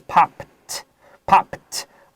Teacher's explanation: 它是清音 so ed 发 T